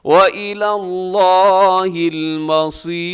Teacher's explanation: وَإِلَى اللَّهِ الْمَصِيرُ، لفظ اللہ یہاں بھی پر ہے، موٹا پڑھا جائے گا، اور مصیر کے آخر میں را کو آپ نے باریک رکھنا ہے کیونکہ را سے پہلے یا ساکنہ ہے